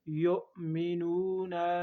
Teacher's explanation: حمزہ ساکنہ ہے، اس لفظ کو جھٹکے کے ساتھ ادا کریں گے